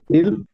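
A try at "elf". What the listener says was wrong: ইটা কিন্তু আমরা এ উচ্চারণ করি ভাই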